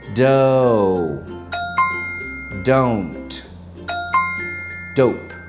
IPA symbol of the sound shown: əʊ